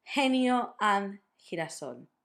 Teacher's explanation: you can do it like a very strong aspirated H from the English